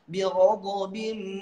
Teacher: idgham bigunnah pakai gunnah agak lamaan